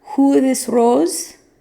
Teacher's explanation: their long O like in the modern word rose is a closed O like in German.